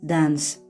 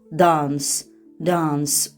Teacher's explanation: British variantında dance, dance uzun a kimi götürülür.